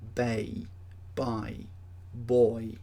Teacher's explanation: Notice when you say them that there's a movement from one vowel sound to the next, and that movement is called a glide. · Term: diphthongs